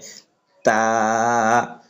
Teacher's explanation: জিহ্বার আগা সামনে উপর দুই দাঁতের গোড়ার সঙ্গে লাগাইয়া এই হরফটি উচ্চারণ হয় তা। তারপর হরফটি আমরা উচ্চারণ করব, এই হরফটির নাম হচ্ছে সা, জিহ্বার আগা সামনে উপরে দুই দাঁতের আগার সঙ্গে লাগাইয়া সা।